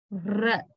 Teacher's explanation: When we say r, our tongue is vibrating, right? Tongue, r. Kind of vibration is there. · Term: trill